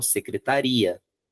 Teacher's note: tiver o acento, a tônica vai para o final, secretaria.